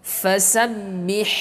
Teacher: Fasabbih, ya, kemudian ha kecil di tengah tenggorokan. Fasabbih harus terlihat, harus terdengar, harus terdengar huruf ha kecilnya.